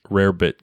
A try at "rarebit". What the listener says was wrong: Rarebit. Sounds like you're saying Robert with like a weird accent. Robert.